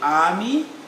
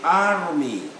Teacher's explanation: that is pronounced all the arms that appear in a word where the british say army the americans say army r must be pronounced